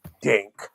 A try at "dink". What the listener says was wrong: It sounds like you're saying dank.